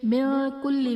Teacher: من کل میں نون ساکن کے بعد حروف اخفا میں سے کاف ہے تو یہاں پر اخفا کا غنہ کریں گے